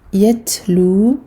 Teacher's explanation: on a le hams du ta, donc l'air, le souffle qui sort en même temps que le ta sakin. Yatlu, 2 temps ici.